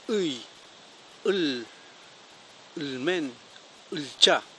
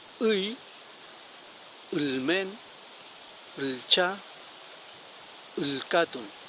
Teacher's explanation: Para pronunciarlo es como si yo subiera mi lengua al paladar y pronunciara esta U.